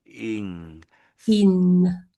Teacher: the NG is just me lifting my tongue at the back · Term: NG sound